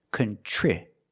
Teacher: TR makes the ch sound like chicken, plus the R together, contri. The I after TR is a short I, so we make the sound I like this is.